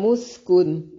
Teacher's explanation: سین کو باریک سیٹی کے ساؤنڈ کے ساتھ ادا کریں گے. کن نون ساکن کا اظہار ہے، اخفاء نہیں کریں گے.